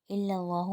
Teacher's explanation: اللہ کا نام ہم موٹا پڑھیں گے کیونکہ اللہ کے نام سے پہلے زبر ہے